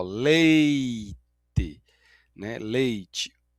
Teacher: O e é vogal e o i é a semivogal